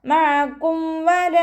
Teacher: മീം സാക്കിനെ വ്യക്തമാക്കി മണിക്കാതെ ഉച്ചരിച്ചു കൊടുക്കുക